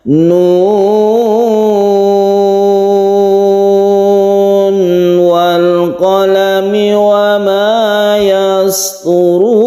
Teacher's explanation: suara n ketika nun itu tetap kita baca n, nun, dan tidak diidghamkan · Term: idhar